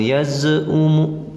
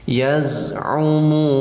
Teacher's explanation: yaz ni z sukun, awas jangan tawalud, jangan dipantulkan.